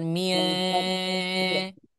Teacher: suaranya akan masuk ke dalam ke dalam hidung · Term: gunah